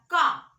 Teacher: जैसे अगर आप व्यंजन में का बोलेंगे तो का आपका कंठ से आता है, का आप बोलिएगा तो लगेगा कंठ पे दबाव पड़ रहा है